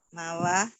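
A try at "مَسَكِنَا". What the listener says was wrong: Emang ada wau nggak di sini? Ayo, ini mim, ini sin. Nggak ada wau loh Bu. Kenapa jadi mawakina? Ayo, mawasina, bukan mawa Bu.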